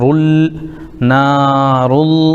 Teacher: اس پیش والی را کو اللہ کے لام سے ملائیں گے